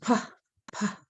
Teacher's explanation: the PH is the aspirated, the blowing P